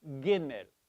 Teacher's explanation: what we mean by the hard G is from the back of the throat. It's a guttural.